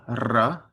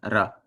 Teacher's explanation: it's like rolling it, but you just tap it. You hit it once. So instead of ra, it's ra.